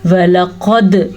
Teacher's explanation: वलक़द, मोटा क़ाफ, क़ाफ मोटा है लेकिन दाल पे कलकला भी है